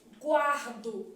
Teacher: Encontro consonantal imperfeito. E aqui eu tenho semivogal mais vogal, ditongo crescente.